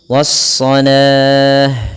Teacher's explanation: alif lam yang memang kita tuliskan di dalam Al-Qur'annya, tapi dia tidak dibaca, sehingga langsung di huruf shadnya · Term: alif lam syamsiyah